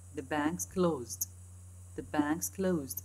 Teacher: this word ends up with three consonants sequences at the final position and the next word starts with initial consonants in sequence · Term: consonant sequences